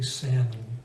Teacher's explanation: I think in other languages the L is pronounced, other languages which have a similar word. But in English, the L we don't say it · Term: silent L